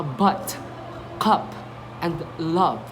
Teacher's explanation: this is a quick, relaxed sound with a central tongue position. Okay, like as in a word, but, cup, and love. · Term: short h